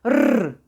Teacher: R derken dilim Ağzımın içinde hafif titremeli